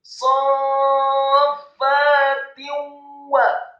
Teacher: Tak yang harokatnya kasroh tanwin bertemu dengan huruf wawu, hukum bacaannya adalah idgham bil gunnah, memasukkan dengan dengung atau dengan gunnah